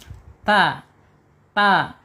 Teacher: Waalaikatihi kaf sudah ta sekarang makhrajnya ada di ee alisan ya. Alisan yaitu ujung lidah menyentuh pangkal gigi seri atas ya.